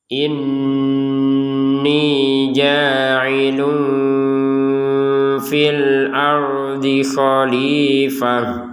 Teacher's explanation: Tanwin bertemu fa kita baca dengan samar. Yang namanya samar itu tetap ada dengungannya.